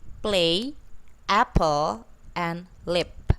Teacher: P, which is voiceless, bilabial stop